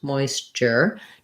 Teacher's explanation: the er sound um unstressed moisture just like paper or better we have a light touch but still a tense er sound